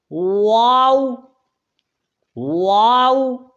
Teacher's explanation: اس کے مخرج میں صرف ہونٹ ہیں، تو ہونٹوں سے ادا کیا جائے، ہونٹوں کو گول کر کے